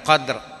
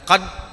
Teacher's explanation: Penekanan takrir. Ini bunyi getaran.